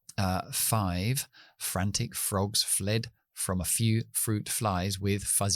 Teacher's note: yo pongo mis dientes de arriba en el labio debajo para hacerla efe